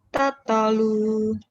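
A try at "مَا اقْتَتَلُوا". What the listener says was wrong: Kenapa jadi mek? Kokolah ya. Tatalu.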